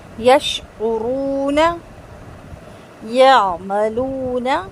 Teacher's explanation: عین کی آواز حلق کے اندر جائے گی, تھوڑی سی رگڑ کھا کے نکلے گی, اور اس کو ہلائیں گے نہیں, یا ایسے کر کے جھٹکا دے کے نہیں پڑھیں گے, ٹھیک ہے.